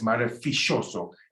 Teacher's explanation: It's a sh sound, the double L. You choose between sh or ya, as I've discussed.